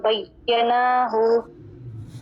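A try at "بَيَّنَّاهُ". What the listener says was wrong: बय्यन्नाहु नून के ऊपर खड़ा ज़बर है, टाइम दीजिए।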